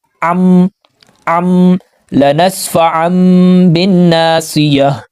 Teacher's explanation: کو ملا رہے ہیں تو نون کی آواز آ رہی ہے، تو اس نون کی جگہ ہم نے میم لگانا ہے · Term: اقلاب